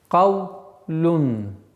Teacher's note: Каф твердый звук, лям мягкий.